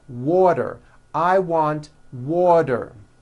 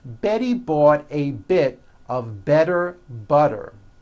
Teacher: if a letter T falls between two vowel sounds which are voiced so if it falls in the middle of vowels then the T is pronounced as a D and the whole word is voiced